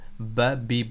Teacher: اسی طرح سے ب، بی، بو، ب میں کیا ہو رہا ہے، دونوں ہونٹ آپس میں مل رہے ہیں، ب میں کیا ہو رہا ہے، دونوں ہونٹ کے گیلی جو جگہ ہے، تر جو جگہ ہے وہ آپس میں مل رہی ہے